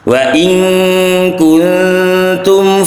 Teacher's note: Dan yang kedua ada hukum nun sukun ketemu kaf. Ini adalah ikhfa hakiki, jadi kita harus mendengungkan dengan dengungan 1,5.